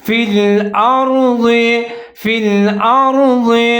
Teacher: اس کے اوپر زبر ہے، آگے ضاد کے نیچے زیر ہے، ضاد کو موٹا کر کے پڑھیں گے · را ساکن ہے، حمزہ اور را ملا کے پڑھیں گے، لیکن را کو موٹا پڑھیں گے کیونکہ اس سے جو پہلے حمزہ ہے اس کے اوپر زبر ہے